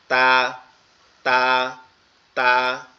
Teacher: তা যেটা আছে এটা হচ্ছে আমাদের জিহ্বার আগা সামনের দুই দাঁতের গোড়ার সঙ্গে লেগে উচ্চারিত হবে